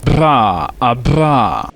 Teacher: une consonne roulée bilabiale voisée affriquée